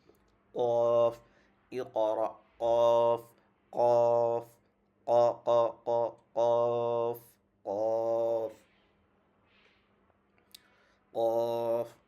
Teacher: তারপর 4 নাম্বার মাখরাজ, এখন হচ্ছে আমরা জিহ্বা থেকে শুরু, জিহ্বার গোড়া থেকে তারপরে উপরে তালুর সঙ্গে লাগিয়ে